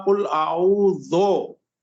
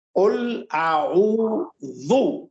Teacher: कुल आऊज़ु बिरब्बिल फलक, नहीं, इसमें 2 चीजें, एक आपने कहा कुल आऊज़ो, नहीं बिल्कुल गलत है, ये मैंने गुज़िश्ता क्लास में ही बताया था कि देखिए अरबी में ओ नाम की कोई चीज नहीं, ऊ है, ऊ यानी जाल, ये फारसी है, ओ जो है ना फारसी अंदाज, ये आऊज़ु, दाल पेश ज़ु, कुल आऊज़ु, इसको आप ज़ो ना पढ़े जी।